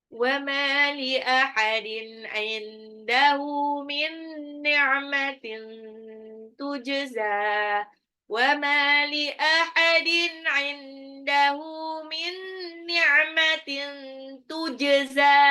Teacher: Min ni'matin tujza, jimnya itu pantul.